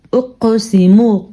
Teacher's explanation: قاف حروف مستعلیہ میں سے بھی ہے یعنی پر پڑے جانے والے حروف میں سے بھی اور حروف قلقلہ میں سے بھی ہے اس لیے یہاں پہ جھٹکا پیدا ہوگا